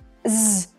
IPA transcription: z